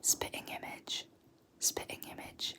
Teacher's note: I lose the T's. I just cut them off.